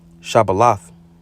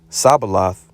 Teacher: the absence of the palatal sibilant sh at the beginning of a word and the use of the lingual sibilant sa in its stead. So they basically took it and switched it with the sa. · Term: local dialect of the Ephraimites